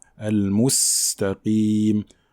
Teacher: Al-mustaqim, en montrant bien cette lettre-là, et en appliquant le sifflement qui accompagne la lettre sin. On peut également parler de la lettre qaf qui porte une kasra ici, donc il faut bien prononcer le qaf emphatique.